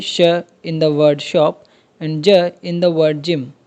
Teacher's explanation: अब ऐसे साउंड्स जिनको प्रोड्यूस करने के लिए आपकी जो ज़बान की बॉडी है यानी कि जो मिडल पार्ट है ज़बान का वो हार्ड पैलेट को टच करे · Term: पैलेटल